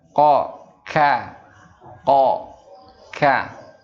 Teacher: Qaf dan kaf ini keduanya makhrajnya ada di pangkal lidah. Lidah bagian belakang.